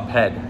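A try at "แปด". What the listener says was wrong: Bad. So ped. In Thai, we The word that we say bad is more like PD, bad. It's not like per, pad. It's not pad, it's bad.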